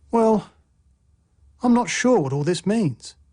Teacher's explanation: a fall rising tone expresses uncertainty